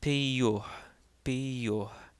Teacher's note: And peyoh means the moon. So, again, the second yota in this word takes on a y sound because it is followed by a short o followed by a vowel.